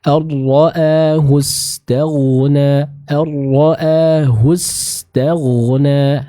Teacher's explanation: huruf ghain ketika dia sukun maka akan terbaca dengan tebal dan mengalirnya suara ya